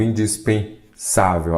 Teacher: A sílaba tônica é o Sa